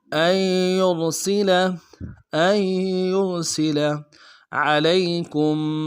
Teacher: حمزہ کو یا کے ساتھ ملانا ہے، نون نہیں پڑھیں گے، یا کے اوپر تشدید زور دیں گے